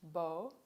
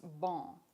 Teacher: The only difference is the nasalization of the vowel sound.